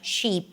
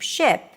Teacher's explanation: The result, different vowel sounds sound the same. So like we have the tense E and the relaxed I in American English, sheep, ship.